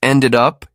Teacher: Notice ended up can sound like ended up, the sounds connecting smoothly.